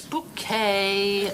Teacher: The accent on the second syllable.